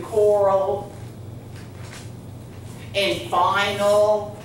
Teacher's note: the schwa is the short u sound in the second syllable